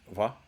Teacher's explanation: Then you have the labiodental tap or flap